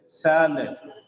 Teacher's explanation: It becomes sa because the first syllable sa is stressed.